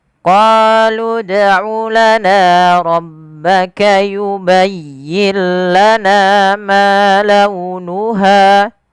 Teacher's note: Ketiga-tiganya harus kita panjangkan sepanjang dua harakat. Karena ketiga bacaan tersebut adalah mad thbi'i, yaitu adanya na yang bertemu dengan alif, ma yang bertemu alif, dan ha bertemu alif semua.